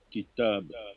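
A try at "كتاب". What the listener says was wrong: Kitab, très bien.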